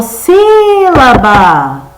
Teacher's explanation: O si. Então, o si é que vai ser a minha sílaba mais forte, ou seja, ela vai ser a sílaba tônica